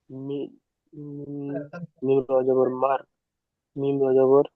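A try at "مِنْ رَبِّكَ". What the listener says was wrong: যাবার নয়, জের, মিম রজের মির। মির রব্বিকা, জি।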